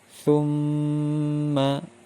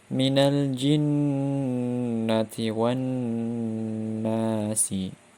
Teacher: Hukum nun tasydid dan mim tasydid ini disebut dengan gunnah dengan lama dengung selama 2 harokat. Contoh dari hukum nun atau gunnah ini yaitu untuk mim tasydid thumma, untuk nun tasydid minal jinnati wan nasi.